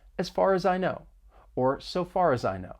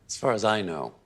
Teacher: more linking may occur we can link the three words far as I when saying the phrase as far as I know